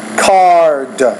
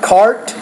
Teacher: the duration of the vowel before the voice consonant will be a little bit longer than the duration of the vowel before the voiceless consonant